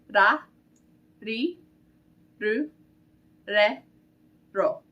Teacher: Now the Japanese R can be a little difficult as well because it doesn't make the sound that we're used to in English. Instead, it makes a sound that's like mixing a D and an L together. So you're gonna put your tongue on the roof of your mouth and kind of flick it.